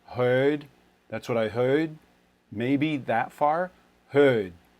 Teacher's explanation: look at a boston accent that's one where they uh like classic boston accent they would actually do a lot of rounding on it